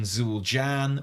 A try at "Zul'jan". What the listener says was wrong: I think the proper pronunciation is Zul'jan. It's like the J is a little softer.